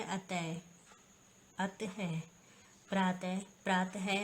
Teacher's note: अंग ए को विसर्ग कहा जाता है। विसर्ग का उच्चारण हल्के से है की तरह छोटे से झटके के साथ किया जाता है